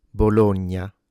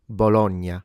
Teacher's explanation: note that these vowels are closed in standard